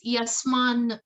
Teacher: But when you combine it with the other 2, when you combine it with na, it becomes yasman. The ta vanishes.